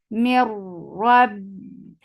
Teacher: ba will get sifa of shidda. The sound will cut off abruptly.